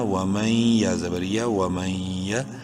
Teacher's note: نون ساکن کے بعد یا یرملون میں سے ہے، ادغام مع الغنہ